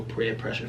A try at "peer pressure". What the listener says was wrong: You sound like you're saying prayer pressure.